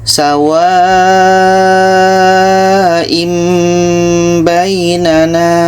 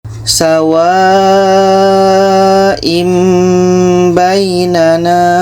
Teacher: Bunyi tanwin kita ubah kepada bunyi mim dan di sini ada dengung.